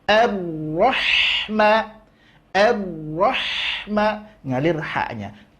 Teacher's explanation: tipiskan huruf ha setelahnya seraya memberikan sifat hamas pada huruf ha, ngalir nafas.